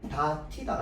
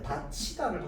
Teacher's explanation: 자, 그래서 이거에 따라서요 지금 다티다라고 해서요 디귿과 히가 만나가지고 다티다라고 우리가 발음을 해야 된단 말이야 원래 규칙으로는. 그런데 구개음화에 따라서요 다티다가 아니라 다치다로 발음하는 게 우리 표준 발음법에 맞는 발음법입니다.